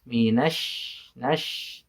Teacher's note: huruf shin itu bukan huruf bibir, tapi huruf shin itu huruf lisan, huruf lidah, tengah-tengah lidah. Jadi bunyi yang kuat itu bukan dari bibir, minash, bukan, tapi minash, nash.